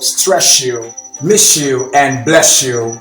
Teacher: whenever a word ends with an S in the British English, and what comes next is a Y, they're going to have the sound sh